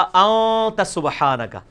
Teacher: इख्फा इसे कहते हैं कि खफी करके पढ़ रहे हैं, नून पूरा वाज़े नहीं कर रहे, अन नहीं पढ़ रहे, पढ़ रहे हैं।